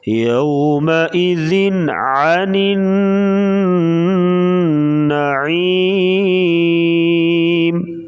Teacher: آگے حروف حلقی آ گیا عین, تو یہاں پر اظہار کر کے پڑھیں گے, یعنی غنے کے بغیر پڑھیں گے. یومئذ عن النعیم.